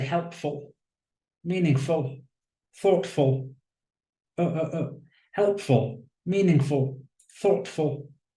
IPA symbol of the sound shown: ə